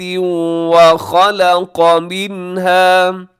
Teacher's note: قاف موٹا ہے اور منها میں اظہار حلقی